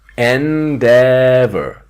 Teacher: The strong syllable is the second one.